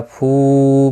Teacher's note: فو مد منفصل ہے، 3 الف کی مقدار کے برابر کھینچ کر پڑھیں گے